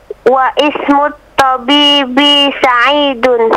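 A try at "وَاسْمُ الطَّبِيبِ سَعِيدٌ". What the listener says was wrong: Wa ismu. Bukan begitu, bacanya wasmu. Wasmut tabib. Jadi untuk kalimat ismu, alifnya itu ketika di tengah tidak dibaca. Nah, jadi ketika ada waw, wasmu, seakan-akan alifnya tidak ada. Seakan-akan dia tidak ada, tapi tulisannya tetap ada. Tapi tidak dibaca. Wawnya langsung ke huruf apa? Ke huruf sin. Wasmut tabibi.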